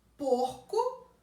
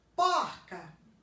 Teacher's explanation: Porco eu pronuncio com esse O fechado. Porca eu pronuncio com o O aberto. Então, além da desinência de gênero, eu também tenho metafonia.